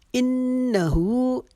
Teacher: نون کے اوپر تشدید ہے، یہاں پر ہم ایک الف کے جتنا گننا کریں گے. ہو کو ایک الف کے جتنا کریں گے کیونکہ یہ الٹا پیش ہے، یہ ایک الف کے جتنا لمبا کھینچ کے پڑھا جاتا ہے.